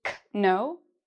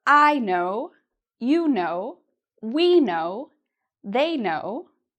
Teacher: the k is actually silent; we don't pronounce the k